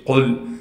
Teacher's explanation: قاف کو موٹا کر کے پڑھیں گے، قاف کو لام ساکن سے ملائیں گے